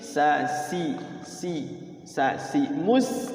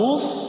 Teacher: So itu kan bunyinya beda dengan sin ya. Sa itu tipis, sa si mus tipis, mustaqim. Kalau mus tebal dia, isti'la.